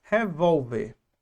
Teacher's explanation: A palavra revólver. Qual é a sílaba tônica? A penúltima. Terminou em R.